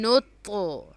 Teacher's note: next ہے طا، طا پہ پھر سے جزم ہے تو اس پہ قلقلہ ہوگا، اس کو پش کر کے پڑھیں گے